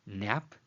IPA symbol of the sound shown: n